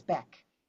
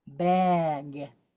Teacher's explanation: The g is not voiced. So we can hear k, back, instead of bag.